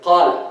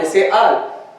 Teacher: In Damascus, most people, they don't say qal, they say al.